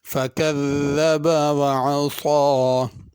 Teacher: کذب ذال کے ساتھ ہے، اس کو زا نہیں پڑھنا۔ عصا صاد کے ساتھ پڑھنا ہے۔